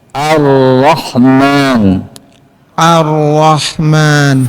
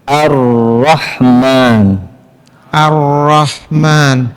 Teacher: paling benar atau sahih huruf lam menyeberang ke ujung lidah sedangkan huruf ro ke ujung lidah dengan sedikit bergeser ke arah huruf lam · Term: sifat inhiraf